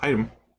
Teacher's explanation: If you listen carefully, the item, I don't really say the T.